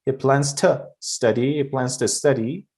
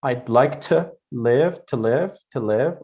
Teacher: that to is normally pronounced really weak. We don't put a stress on it and we don't pronounce it really hard.